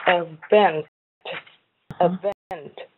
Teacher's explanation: remember the event is stressed on vent.